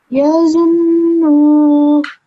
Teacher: this noon obviously you have to make the ghunna sound. It's like a nasal sound.